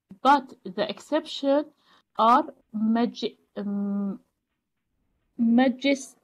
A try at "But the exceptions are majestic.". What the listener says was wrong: Very good, well done. Yeah, good. So, nicely read.